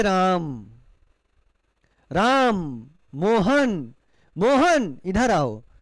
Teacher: जब हम मोहन का उच्चारण करते हैं तो बुलाते समय हम क्या देखते हैं कि थोड़ा लय को अपने बढ़ा के बोलते हैं। · जब हम किसी को बुलाते हैं, पुकारते हैं, तो वहां पर लय को हम क्या करते हैं? खींचते हैं। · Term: प्लुत स्वर, पुलुत स्वर